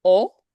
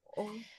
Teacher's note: in Irish it would be more rounded, sometimes slightly back, but still an O.